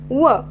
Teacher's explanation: व हा अंतस्थ आहे आणि ओष्ठ वर्ण आहे